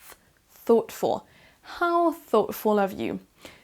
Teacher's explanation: vous mettez votre langue au niveau de vos dents supérieur et à partir de là vous soufflez un petit peu d'air pour faire la bonne prononciation de ce son th